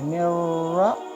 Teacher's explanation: را کے اوپر زبر ہوتی ہے تو را کو پر پڑھیں گے،